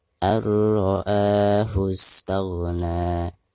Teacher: Dan huruf ro ini termasuk idgham bila gunah. Maka cara membaca nun sukunnya itu harus dimasukkan langsung ke huruf ro-nya disertai dengan tidak gunah · Ketika membaca a-nya di sini dipanjangkan 2 harokat karena dihukumi mad badal ya. Ketika diwakafkan maka bacaan na-nya dipanjangkan 2 harokat karena dihukumi mad tabi'i.